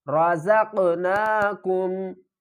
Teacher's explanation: زا کو قاف کے ساتھ ملائیں گے اور قاف کو اوپر قلقلہ بھی کریں گے اور ہلا کر بھی پڑھیں گے